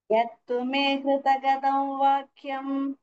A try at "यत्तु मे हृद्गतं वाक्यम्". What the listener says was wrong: हृदगतं न this is halanta हृद्गतं no hृda is not there हृद्गतं no hृda you are saying the full the is half हृद्गतं